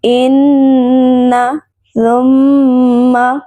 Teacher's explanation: یہاں پر نون اور میم پر شد ہے، اس لیے دونوں پر ایک الف کے برابر غنہ ہوگا